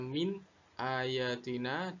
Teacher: Min ayatina, dibaca apa adanya, dibaca min ayatina dan tanpa disertai dengung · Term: bacaan izhar